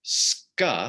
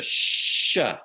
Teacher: that sound was softened from sk to sh. So it went from an SK sound to an SH sound.